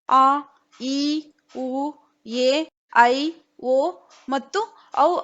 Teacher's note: वे स्वर जिनके उच्चारण में ह्रस्व स्वर से 2 गुना समय लगता है वे दीर्घ स्वर कहलाते हैं. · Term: ದೀರ್ಘ ಸ್ವರ